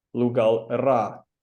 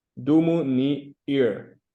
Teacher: So what happens when you have a word that ends in a vowel, or a construction that ends in a vowel, is that the a of the ra gets elided, and what you're left with is just the r